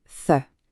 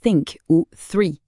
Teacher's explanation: Pour se faire une idée, c'est exactement le th qu'on trouve dans des mots anglais comme think ou three. C'est un son très léger, presque un souffle.